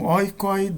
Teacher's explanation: esse oi final, no segundo caso, ele é mais breve, é pronunciado de modo mais breve do que no primeiro caso